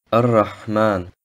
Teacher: Das Alif und Lam im Wort Ar-Rahman werden nicht ausgesprochen, außer es steht am Satzanfang. Das H sollte aus dem mittleren Kehlkopf ausgesprochen werden.